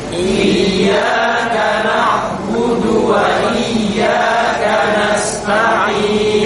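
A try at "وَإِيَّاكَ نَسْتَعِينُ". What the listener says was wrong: Kanas, tipiskan. Bukan kanaus. Kanaus bukan kanas.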